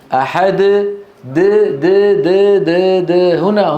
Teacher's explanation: الدال من طرف اللسان